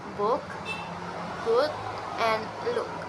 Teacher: it's produced by placing the tongue in a somewhat lower position called mid-high. To produce these sounds, the very back part of the tongue or slightly close to central vowels is used, and the shapes of the lips is rounded. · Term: Mid-high back rounded vowels